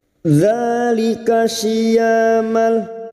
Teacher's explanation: syia ya fathah diikuti alif 2 harakat mad tabi'i